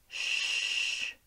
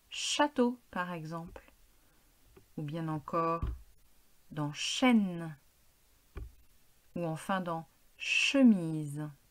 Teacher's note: Rien ne se passe. Ce son est sourd. Les cordes vocales ne vibrent pas.